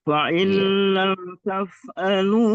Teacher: nunnya tidak dianggap lagi. Faillam langsung ke dalam huruf lam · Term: idgham kamil